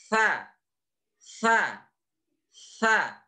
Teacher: posisinya adalah berada di ujung lidah dan menempel pada ujung gigi seri yang atas dan udaranya keluar karena merupakan huruf hams sa sa sa lembut ya sah-sah Oke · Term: huruf tsa